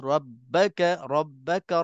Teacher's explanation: ra berbaris atas, qaulan wahidan, tak ada khilaf lagi. Tebalkan ra, jangan tipis.